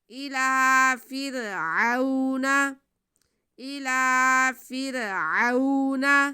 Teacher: را ساکن سے پہلے زیر، را کو باریک پڑھیں گے.